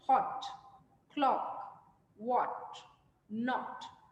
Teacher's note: made with rounded lips and tongue slightly raised at the back